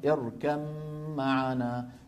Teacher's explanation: لما ندغم الباء في الميم معناها حولناها لمين؟ حولناها لميم، فصار نطق بميم مشددة